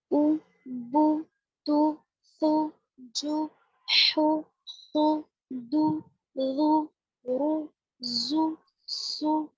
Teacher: پیش کی آواز آگے کو جاتی ہے اور ہونٹوں کے کنارے ملتے ہیں. جب ہم پیش کو پروناؤنس کریں گے او بو تو پورے ہونٹ گول ہوں گے، ہونٹوں کے کنارے ملیں گے اور بیچ کچھ حصہ کھلا رہے گا منہ کا